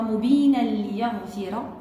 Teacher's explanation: عندنا إدغام تام وبدون غنة